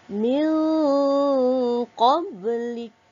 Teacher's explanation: Yang mana nun mati tadi bertemu dengan huruf qaf, maka kita hendaklah menyembunyikan sebutan nun sakinah tadi, nun mati, di antara sebutan izhar iaitu terang, sebutan yang terang ataupun jelas, dan kita masukkan ke dalam huruf qaf, iaitu kita idghamkan dia dengan berserta dengung dua harakat. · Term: ikhfa hakiki